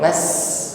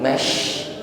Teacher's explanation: Nampak jelas di sini, yaitu meluasnya udara di dalam mulut, bukan sekedar mas, ya, tetapi mash, tekanan udaranya lebih terasa di dalam mulut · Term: tafasyi